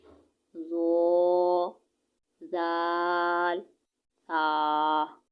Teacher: जबान का सिरा और ऊपर के दांतो के अंदरूनी किनारों से अदा होते हैं